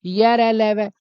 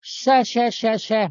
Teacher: तो मैं आपके सामने कहूंगा कि भाई कौन से वाले अल्पप्राण है कौन से वाले महाप्राण है, तो आप हाथ लगाइए मुंह के आगे और बोलिए ये रे ले वे। जब आप ये रे ले वे बोलेंगे तो कम हवा निकल रही है, और जैसे आप बोलते हैं ना शय शय शय शय है, तो मेरे भाई अब हवा ज्यादा निकल रही है